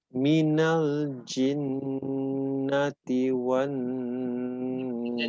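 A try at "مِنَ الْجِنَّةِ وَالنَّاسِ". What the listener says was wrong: Jangan terlalu ci, tapi ji. Ya, jadi jimnya jangan terlalu becek ya. Kayak tanah tapi becek itu tanah tapi setelah hujan. Setelah hujan itu becek, jadi banyak berair gitu. Ya, kalau tanah kena hujan, ya kalau tanah kena hujan becek itu ya. Jadi terlalu banyak hamas ya. Kurangi sedikit. Ji.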